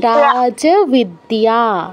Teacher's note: র এর সাথে আকার আছে যেটা দীর্ঘস্বর বিদ্যা এর সাথেও আকার আছে দীর্ঘস্বর মানে এই দুটো আমাদের দীর্ঘ উচ্চারণ করতে হবে আর যেই বটা আছে এটা ও তো এটার উচ্চারণ বাংলা ব